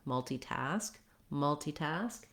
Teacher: The stress in multitask, the main stress is on task, and then you have a little bit of stress on the mul syllable as well. So the rhythm is kind of long, short, long, multitask, multitask.